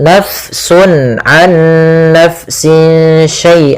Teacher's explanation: Kemudian pelafal nafsun nafsinya. Di sini fanya dialirkan karena fa memiliki salah satu sifat yaitu sifat hames. Yang di mana dia jaroyanun nafas harus mengalir nafas kita di dalam melafalkannya.